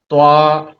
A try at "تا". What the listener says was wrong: باریک کیجیے، پتلا کیجیے. تا.